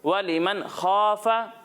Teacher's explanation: नून हरूफ कलकला में से नहीं है, तो यहाँ आवाज़ हिलनी नहीं चाहिए